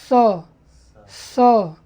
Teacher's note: इस स में सीटी आता है।